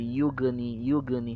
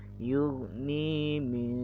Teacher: go bertanda sukun, jangan sampai menjadi qalqalah